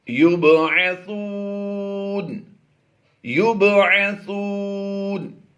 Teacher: बा साकिन है, यहाँ पर हमने कलकला करके पढ़ना है और यहाँ पर हमने ज़बर को जज़म से बदल देना है।